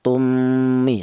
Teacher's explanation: Idgham itu artinya mem mati yang pertama ini langsung menyatu ke huruf mem yang kedua ya. Namanya idgham atau melebur ya, tummi, seperti itu. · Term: idgham misli